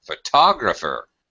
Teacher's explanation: the stress is moved from the first syllable to the second syllable